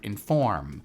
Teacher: You emphasize the form, the second part